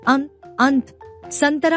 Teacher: अनुस्वार का उच्चारण नाक से होता है